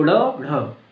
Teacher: जो आपकी जीभ है वो कहाँ जा रही है, ऊपर आती है, फिर झटके से ऐसे आती है आगे की तरफ, मूर्धा को टच करती है फिर। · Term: उत्क्षिप्त